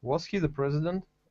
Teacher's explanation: the intonation goes up because it's a closed question